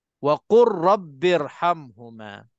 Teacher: kita terus masukkan lam ke dalam ra dan sabdukan ra itu betul-betul, dan ra itu mufakhamah ataupun ra itu tafkhim, ra tebal. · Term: idgham mutaqaribain